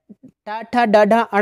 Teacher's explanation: ट ठ ड ढ अण जो होते हैं ये मूर्धा यानी इनका उच्चारण करते समय जो जीभ होती है वह मसूड़ों को स्पर्श करती है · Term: मूर्धन्य